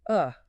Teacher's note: >> To make awah, you basically do nothing. Your jaw drops a tiny bit, your tongue is flat, and you just say uh >> just a totally relaxed sigh. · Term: schwa